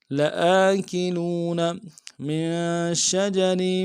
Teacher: میم کو نون ساکن کے ساتھ ملانا، نون ساکن میں غنہ کریں گے